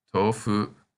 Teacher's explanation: the O in to is said twice as long